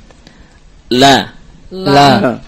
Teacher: Lam keluar dari tepi lidah atau dalam bahasa Arab hafatu al-lisan. Tepi lidah bagian depan, hafatul lisan al-amamiyah. Nah. Yang ditempelkan ke gusi atas atau ke gusi, yakni ke gusi yang berbatasan dengan al-hanak atau langit-langit.